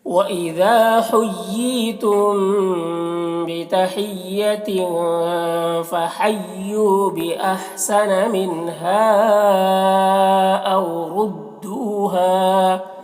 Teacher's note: ردو میں را کو پور پڑھنا ہے، دو میں واو مدہ ہے، ایک الف کے برابر کھینچیں گے